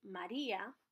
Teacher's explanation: The I is a cerrada and the A is abierta, but because the I is the one that has the strength of the pronunciation that breaks the syllable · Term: hiato